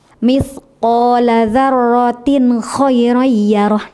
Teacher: di situ ada kasrah tanwin bertemu dengan kha. Nah, maka suara nunnya itu harus jelas. Tunaikan dulu makhraj nunnya, baru berpindah kepada huruf lain.